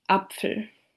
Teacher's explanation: before any word that starts with a vowel, German-speaking people insert a small glottal stop